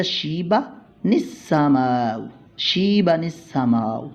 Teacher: تنوین کے نون کو سین کے ساتھ ملا کر ہم پڑھیں گے، یہ حمزہ گر جائے گا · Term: نون قطنی